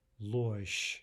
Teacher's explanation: There again we have what looks like a soft zh, but it's the same as in the word we just looked at. It's devoicing to a sh sound at the end of the word.